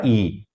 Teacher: ई के उच्चारण में क्योंकि ये तालू के करीब जीभ जाती है इसलिए हमारी जीभ का जो अग्रिम भाग है वोह तालू की तरफ उठता है ई और इसलिए इसे अग्र स्वर कहा जाता है ई से